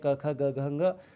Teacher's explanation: स्पर्श वर्ण में जैसे क वर्ग है जो वो कंठ से बोला जाता है